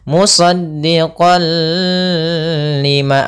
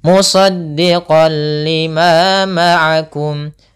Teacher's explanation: tidak boleh pakai gunnah, tidak boleh ditahan, tidak boleh musaddiqal lima.